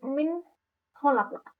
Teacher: Ketika nun mati itu bertemu dengan huruf ko, maka terbaca jelas. bukan mim khalaq tapi min khalaq min nunnya terbaca dengan sangat jelas. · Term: izhar